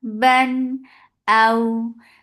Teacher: Hamza is sharp, but this waw is lean. So when you're attaching fatha with waw, here you are making it soft.